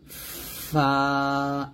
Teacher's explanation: উপর দুই দাঁত নিচের ঠোঁটে লাগিয়ে ফা উচ্চারণ করতে হয়